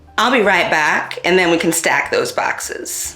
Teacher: A 2016 study found bat retraction, or the A vowel being pronounced further back in the mouth